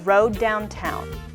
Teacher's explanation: because the word after Road begins with a d the two words just share One D sound